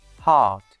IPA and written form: hɑːt (heart)